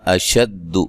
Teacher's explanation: حمزہ کو تحقیق سے پڑھنا ہے